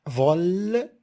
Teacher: vol, syllabe fermée par la consonne L, alors le O, elle est ouvert